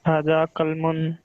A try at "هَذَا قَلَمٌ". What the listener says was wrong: haza, not kalmun, it is qalamun. On lam, yes, on lam there is a fatha, means there is a sound. There is not sukun.